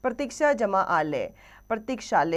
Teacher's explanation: प्रतीक्षा शब्द की अंतिम ध्वनि आ तथा आलय शब्द की प्रथम ध्वनि आ मिलाकर आ हो गए हैं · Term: स्वर संधि